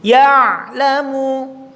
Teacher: Jadi contoh mengucapkan ain satu harus betul-betul ketika sukun ada sedikit molor.